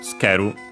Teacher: the u in tsu barely heard if at all, because it's between a voice consonant, so tsukeru.